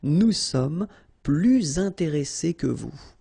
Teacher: Okay, and in that case, well, you make this little link, little liaison between the two, so you hear a little bit this S